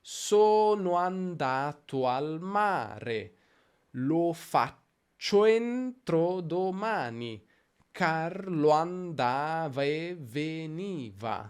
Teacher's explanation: la prima vocale delle due è molto breve, così breve che in realtà la sua sillaba si fonde con quella successiva, diventano una sola sillaba.